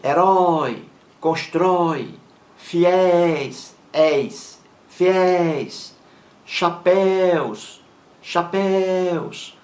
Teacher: São palavras oxítonas. A sílaba mais forte é a última